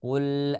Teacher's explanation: ya ketika kita mengucapkan huruf lam sukun ya kita menekan ya padahal ketika mengucapkan huruf lam sukun dalam keadaan sukun maka itu tidak ditekan